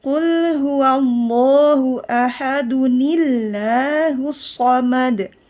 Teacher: Ni-nya tetap dibaca tipis. Lafzul jalalanya dibaca tipis karena ni huruf tipis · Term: Nun wikoya